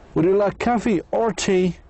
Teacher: So the first time your voice goes up and the second it goes down.